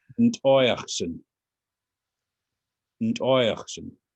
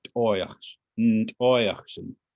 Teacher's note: So the emphasis is on the oi part.